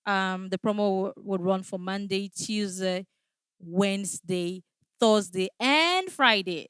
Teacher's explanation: So you are giving the information in a rising tone. It comes with an emotion. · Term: rise intonation